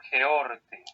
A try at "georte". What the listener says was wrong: Exactamente, georte. Ahorita habías hecho sin el espíritu, ahora lo haces con el espíritu, pero el acento recuerda que va al final, georte.